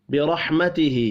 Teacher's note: را بھی پر پڑھا جائے گا، کھڑی زیر کو 1 الف کے برابر کھینچ کر پڑھیں گے